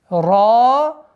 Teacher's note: Твердое произношение ра с долготой в размере двух огласовок